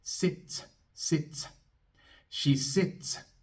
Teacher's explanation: Así que la S al final va a ser sorda. Vamos a soplar un poco de aire después. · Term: S sorda